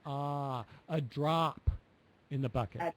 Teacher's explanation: drop is more of an ah sound, and you were a little bit more on the O sound, like drop.